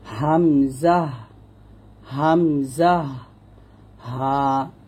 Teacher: এই 2টো হরফ আমরা গলার শুরু থেকে বা কণ্ঠনালীর শুরু থেকে উচ্চারণ করব।